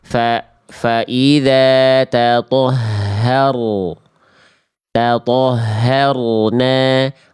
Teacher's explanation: Jadi kalau ada ro sukun, teman-teman, sebelumnya fathah, maka tebalkan ro-nya. Caranya gimana? Caranya angkat pangkal lidah. Ya. Jadi dibacanya fa idza tatahharu.